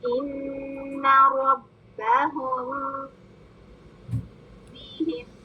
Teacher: یہ میم کو ہم نے لمبا غنہ دے کے پڑھنا ہے کیونکہ آگے با آ رہا ہے